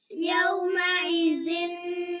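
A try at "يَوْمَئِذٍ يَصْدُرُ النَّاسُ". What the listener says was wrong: এই জিন বলেন কেন? তো আপনি জিন বলেন কেন? ইয়াউমাইযি ইয়াসদুরুন নাসু ইয়াউমাইযি ইয়াসদুরুন নাসু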